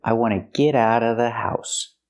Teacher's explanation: you don't have to pronounce the Vv sound in of because it's before a consonant